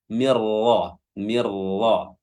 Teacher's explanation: Min nun sukun bertemu dengan ra, ya, hukumnya adalah idgham bila gunnah. Ya, idgham memasukkan bila gunnah tanpa dengung langsung ke huruf ra tanpa ditahan juga.